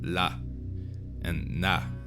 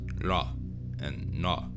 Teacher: the L and the N might have been pronounced more in the front of the mouth, like la and na, and not la and na.